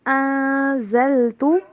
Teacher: یہاں پہ آپ نے ان نہیں پڑھنا بلکہ انزلت، اخفا کیجئے